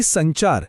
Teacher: पण क च्या आधी नाकातून उच्चार आहे आणि संचार या शब्दात च च्या आधी नाकातून उच्चार आहे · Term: अनुस्वार